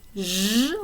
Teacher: Zh, like vision, would be a voiced post-alveolar fricative